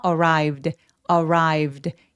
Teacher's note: When the package arrived, when the package arrived 이렇게요. arrive 할 때 v 다음에 바로 D 소리가 연결돼요. arrived 이렇게 연결해 주세요.